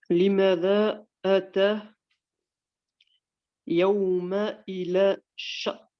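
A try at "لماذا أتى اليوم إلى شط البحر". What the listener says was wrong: Alors, limada atal yawma. Atal yawma. Alif lam, il faut qu'on l'entende. Limada atal yawma. Ou alors, si tu t'arrêtes, tu dis limada ata al yawma.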